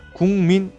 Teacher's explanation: 뒤에 오는 미음에 의해서 기역이 이응으로 바뀌는 현상, 비음화 맞네요